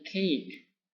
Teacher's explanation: putting the back part of the tongue against the soft palates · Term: velars